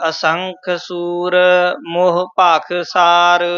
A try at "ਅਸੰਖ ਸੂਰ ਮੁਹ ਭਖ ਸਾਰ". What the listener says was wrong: ਇਹ ਮੋਹ ਮੂਹ ਨਹੀਂ ਕਹਿਣਾ ਮਮੇ ਔਂਕੜ ਹੈ